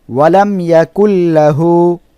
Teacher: ইজহারে শাফাবি মিম সাকিনের পরে ইজহারে শাফাবির কোন অক্ষর আসলে সেই মিম সাকিন কে গুন্নাহ ছাড়া স্পষ্ট করে পড়তে হয় আমরা উদাহরণটা পড়ি ওয়ালাম মিম এর উপরে সাকিন এরপরের অক্ষর ইয়া